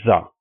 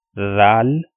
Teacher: we pronounce this sound with more stress, or you can say that we pronounce it with kind of a whistle sound